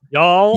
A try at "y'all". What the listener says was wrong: You sound like you're saying it sounds like you're saying Jarl, like a Viking.